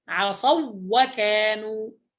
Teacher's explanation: البعض يجعل فيها غنة فيقول عصوا وكانوا، هذا خطأ. عصوا واو واحدة مشددة لأن هذين مثلين. عصوا واو ساكنة والواو الأخرى متحركة مفتوحة فيصير إدغام مثلين صغير فيكون عصوا وكانوا هكذا.